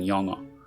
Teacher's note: if two ㅇ’s come in contact, the coda doesn’t just disappear but retains its original pronunciation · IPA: [영어]